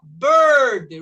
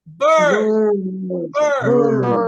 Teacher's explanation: A vogal está controlada pelo R.